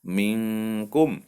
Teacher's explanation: bertemu dengan huruf Kaf maka disitu berlaku hukum ikhfa Hakiki artinya samar disamarkan diantara dengung dan jelas